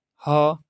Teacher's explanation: ह बोलने से कंठ से निकल रहा है ना ह और विसर्ग में भी ह जैसे अह कह रहे